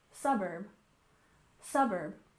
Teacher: finally we have suburb with stress on the first syllable